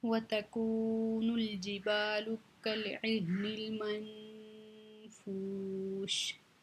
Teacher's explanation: منفوش واو مدہ ہے، اس کو کھینچ کے شین ساکن کر کے اس پہ ہم وقف کر دیں گے